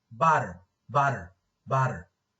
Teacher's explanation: Later on here, this is the flap, which is represented by d. This flap is produced by the tongue tip being thrown against the alveolar ridge for an instant.